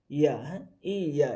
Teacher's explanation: আর ইয়াটা হয় জিহ্বার মধ্যখান উপরে তালুর সাথে লাগিয়ে